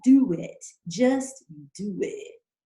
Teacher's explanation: that's a W that's connecting the O in do to the I in it